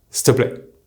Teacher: between our SS sound and our T sound, which flow very nicely together, we pushed it a step further and removed that vowel EE sound · the faster you go, the more that EE sound will disappear